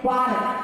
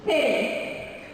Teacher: a very light D and do not over exaggerate in the D